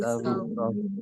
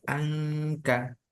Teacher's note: Angka itu mulutnya membentuk huruf kaf karena ikhfa dia.